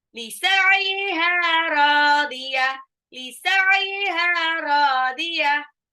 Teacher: Lisa'iha, haknya 2 harokat, radiyah, roknya juga 2 harokat. Iya-nya jangan panjang ya, pendek.